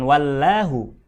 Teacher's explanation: maka lafadz Allah nya mesti dibaca tebal alias tafkhim mendekati suara o